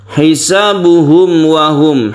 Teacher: mem mati bertemu dengan wau kita sebut dengan izhar syafawi disebut izhar karena harus jelas dan terang